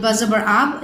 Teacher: during the pronunciation of letter ba sound is stopped at 2 lips. So makhraj of the letter ba is both the lips of the mouth.